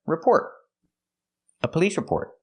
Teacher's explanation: Link the words. And the T at the end of report is a stop T.